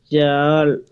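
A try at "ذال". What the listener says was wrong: শক্ত হবে না, জাল তো হচ্ছে জিম থেকে, জিব্বার মধ্যখান লাগাইয়া জাল। আর এটা হবে লাল, এইখানটাই লাগবে, লাল। লাল, দা থেকে শুরু হবে, লামের মাখরাজে শেষ হবে, তাও দাঁতেই, লাল, লাল। জিব্বাটা আগায় আগায় নিয়ে আসেন, লাল।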